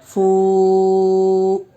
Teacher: واو ساکن سے پہلے فا کے اوپر پیش ہے، واو مدہ ہوگا، اس لیے واو مدہ کو ایک الف کے برابر کھینچ کر پڑھیں گے